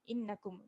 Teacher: Mim mati tanpa tanda, jangan dengung kat sini.